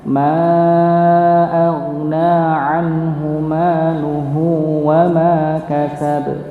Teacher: Jadi huruf haknya, hu-nya ini dipanjangkan 2 harokat, mimnya juga, mimnya yang sebelah sini juga panjangkan maluhu wa ma kasab ya gitu tanpa ditekan.